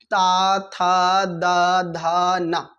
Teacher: जब ता बोलेंगे तो हमारी जबान जाके दांत से लड़ेगी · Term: ता वर्ग